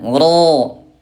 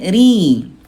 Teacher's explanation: tafkhim tebal yaitu dengan cara mengangkat pangkal lidah ro gitu ya, ro. Nah bunda kalau tarkik tipis dia turun pangkal lidahnya